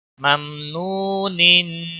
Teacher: वाव मद्दा है, मीम पर इजहार होगा, वाव मद्दा है, वाव साकिन से पहले पेश है, एक अलिफ के बराबर इसको खींचना होगा